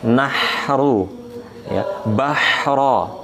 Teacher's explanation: huruf H itu udara mengalir, H, kemudian suaranya juga rokhawah mengalir